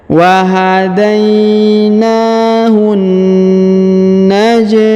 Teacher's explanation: ke huruf na yang bertasdid ditahan dan ditekan ya wahun naj huruf ja berharakat sukun maka dia dipantulkan atau diqalqalahkan · Kemudian huruf hu langsung sambung masuk ke huruf na yang bertasdid atau ini alif lam syamsiyah ya. Huruf hu langsung ke alif lam syamsiyah, melangsung ke huruf na yang bertasdid, ditahan dan ditekan ya.